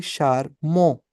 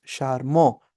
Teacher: ठीक है, और क्योंकि AN पे जाके साउंड फिनिश हो गई, because that's the last vowel and nasal, so it becomes शारमो, we won't pronounce T